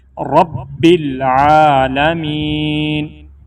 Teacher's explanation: با کے اوپر شد ہے، را کو ڈائریکٹ با سے ملا کے سختی سے پڑھیں گے۔